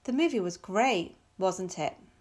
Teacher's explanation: the speaker is seeking confirmation, so she's using falling intonation in the question tag